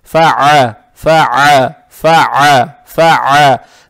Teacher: Далее стоит буква «айн», гортанная с фатхой. Соответственно, фатху произносим через гортань.